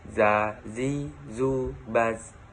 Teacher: Melafalkan huruf za dikeluarkan dengan ujung lisan hampir dengan 2 gigi seri bagian bawah. Diucapkan dengan mengalir suara tanpa diiringi dengan udara.